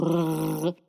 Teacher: The R sound in French is deep in the throat. To do the R sound, you really need to practice gargling.